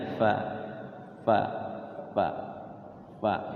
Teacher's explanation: jangan pa tapi Fa ada anginnya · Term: huruf Fa